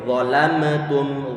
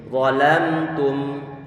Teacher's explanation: Ini kalau sifat bainiyah tidak diberikan, maka nanti qalqalah akan muncul. Akan terqalqalahkan huruf mim.